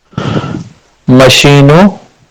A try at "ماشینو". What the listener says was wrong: ماشینو. ٹھیک ہے تھوڑا سا الف کو کھینچ کے بولنا ہے. ماشینو